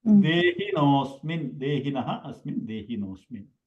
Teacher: the rule of this visarga sandhi or shivoham sandhi is the visarga aha will become o